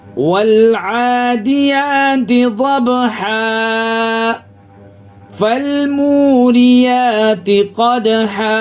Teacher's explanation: अगर यहाँ पे हमको सांस नहीं तोड़ना है तो यहाँ पे हम इख्फा करके जाएंगे। तनवीन के बाद हुरूफ इख्फा के 15 हरफों में से फा है, इसकी वजह से जो है यहाँ पे इख्फा करेंगे तो नाक में आवाज को छिपाएंगे